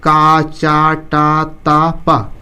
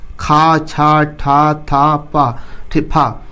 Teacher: इसको देखिए बोलते समय थोड़ा ज्यादा जोर देना पड़ रहा है का की अपेक्षा खा बोलते समय ज्यादा ताकत की आवश्यकता होती है इसीलिए इसको महाप्राण कहते हैं ठीक है तो हर वर्ग का